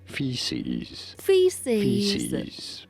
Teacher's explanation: You do want to stress on the first syllable.